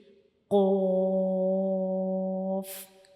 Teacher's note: तो हमारा जो नरम तालु होता है वो हमारी ज़ुबान का बहुत पीछे वाला हिस्सा होता है उसके साथ थोड़ा सा टच करता है, तो हम क़ाफ़ को अदा करते हैं।